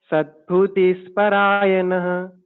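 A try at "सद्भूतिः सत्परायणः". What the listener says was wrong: Sadbhuti. Bhu is dirgha there. Sadbhutis Satparayanah.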